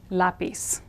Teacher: The Z in Spanish is pronounced as an S in Latin America.